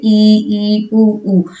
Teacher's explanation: हमारा मुख क्या होता है बहुत ही कम खुला होता है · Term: संवृत